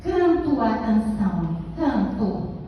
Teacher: Escreve O, mas eu digo canto. O som é o U. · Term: debordamento